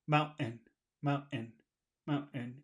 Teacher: There is a sound, but it's not T. It's like a little cough.